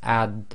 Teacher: And with the sukoon here, the practice, it will be ad, and again it's like the ad with the dal, but it's a thick version equivalent. It's the tafkhim version of the dal